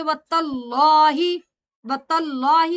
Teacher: اگر ہم تجوید کریں تو طلّہ لفظ جلالہ، اللہ سے پہلے فتح ہے اس لیے لام موٹا پڑا جائے گا